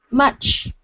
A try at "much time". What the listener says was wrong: That's the CH. You can pronounce it all by itself, but when you're pairing it against the T, that's when it fails. You're saying mush time. Instead of mush, it's much time. That's the CH.